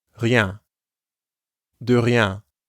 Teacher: rien has the French R sound, which comes from the back of the throat, and ien, the nasal sound you hear in bien.